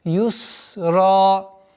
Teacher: так как син является свистящим, нужно досконально договорить это свойство. Юсра. Ра твердый, аннулируется удлинительный алиф, остается огласовка в размере двух огласовок и удлинение. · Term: свистящий